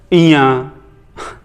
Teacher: नासिक मतलब ये जब आप बोलोगे तो आपका नाक से भी कुछ ना कुछ साउंड निकलेगा